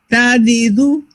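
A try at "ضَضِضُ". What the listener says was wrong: Now we need to make it heavier. So let's say wa. So the back, you lift it up.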